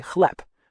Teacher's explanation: spelled chleb, with a B at the end, but you actually say chleb, with a P sound. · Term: devoicing